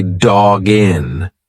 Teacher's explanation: you've put the G in front of the next word it's one sound · when you've got that hard consonant follow Follow by a vowel just push the two together like it's one word so instead of saying dog in you're going to say dog